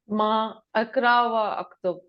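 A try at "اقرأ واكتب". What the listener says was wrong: زیر کے ساتھ، اقرا کسرا۔ وہ اکتب نہیں، وقتب، کاف پر جزم، وہ حمزہ نہیں پڑھا جائے گا بیچ کا،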